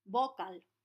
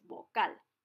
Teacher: If we put the strength of the pronunciation in the first syllable, however, we would say vocal